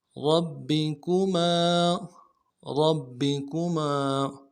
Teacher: آلاء، آلاء ربکما، ربکما، را کو موٹا ادا کرنا ہے اور با کے ساتھ ملانا ہے، با کے اوپر تشدید زور دیں گے، اگلے با کو نرم سے ادا کریں گے، کاف کو بھی نرم سے ادا کریں گے، میم کے ساتھ الف مدہ ہے، ایک الف مقدار میں کھینچیں گے۔